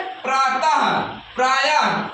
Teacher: विसर्ग का उच्चारण हा की तरह होता है ना।